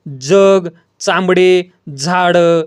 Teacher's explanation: उच्चार करताना दात व टाळूचा स्पर्श होतो आणि अकारयुक्त उच्चार होतो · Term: दंततालव्य